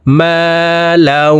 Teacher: এই তানউইনওয়ালা লামটি তাসদিদওয়ালা ওয়ার সাথে গুন্নার সহিত মিলাইয়া পড়তে হবে